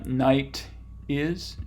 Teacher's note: is and going from the vowel or diphthong and night to the T which turns into a flap basically